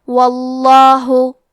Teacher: لفظ الجلالہ کے لام کا حکم ہے تفخیم، تو ہم حرف اللام کو موٹی آواز میں پڑھیں گے